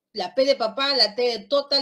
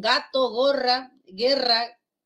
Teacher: el aire sale con dificultad total y luego una explosión si es dificultad total y luego una explosión así como cuando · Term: oclusión